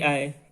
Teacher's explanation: जो ए आए वर्ण है ये कंठ और ताल दोनों से बोले जाते हैं, यानी इनको बोलते समय कंठ और ताल दोनों का स्पर्श होता है।